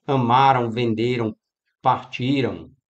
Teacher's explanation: eles têm um som nasalizado, é um ditongo nasal, essa terminação an.